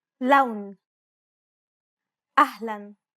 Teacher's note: unlike the English L the tongue is ever so slightly flatter and straighter in Arabic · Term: Arabic L sound